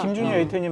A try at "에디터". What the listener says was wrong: 웨이터 아니고 에디터요. 발음이 약간 좀 웨이터로 가신 것 같아서.